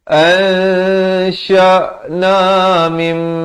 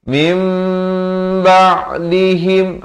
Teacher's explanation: ditukarkan daripada bunyi nun kepada bunyi mim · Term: hukum iqlab